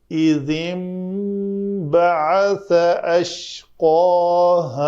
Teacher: تو یہاں نون کی ادائیگی نہیں ہوگی بلکہ نون جو ہے وہ میم سے بدل کر پڑھا جائے گا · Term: اقلاب